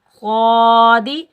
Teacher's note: قاد کو موٹا پڑھیں گے اور قاف کو بھی موٹا پڑھیں گے، یہ دونوں حروف مستعلیٰ میں سے ہے۔ قاد کے اوپر کھڑا زبر ایک الف کی مقدار کھینچ کر ادا کریں گے، دال کے نیچے زیر بغیر کھینچے پڑھیں گے قادی۔ · قاد کے اوپر کھڑا زبر ایک الف کی مقدار کھینچ کر ادا کریں گے، دال کے نیچے زیر بغیر کھینچے پڑھیں گے قادی۔ قاف پر ہم کلکلا کی آواز نہیں نکالیں گے، مطلب کلکلا پیدا نہیں کریں گے۔